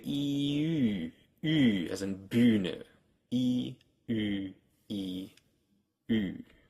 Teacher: And then they round their lips, like you would do with U or O. They round their lips without moving the tongue. So if you take E, as in Biene, E, and you round your lips without moving your tongue at all, it should stay all the way in the front, as high as it can go. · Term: rounded vowels